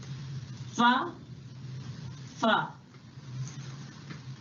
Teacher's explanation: In Hindi, we pronounce pha sound with both the lips, pha, pha. Whereas in English, it is pronounced with the lower lip, almost touches the upper teeth. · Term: fa sound